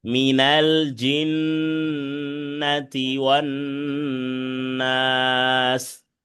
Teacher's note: জিন্নাতে টান দেওয়া যাবে না, হরকতের উচ্চারণ তাড়াতাড়ি।